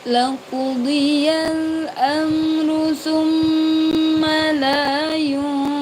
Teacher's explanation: Summa dibaca dengung. La panjangkan karena ada fathah yang diikuti alif